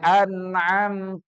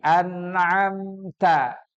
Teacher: siratol [Musik] anadina [Musik] anamtaaihim enggak boleh Anam enggak tapi anamta ta itu hurufnya tipis berada di ujung lidah dengan mengeluarkan desisan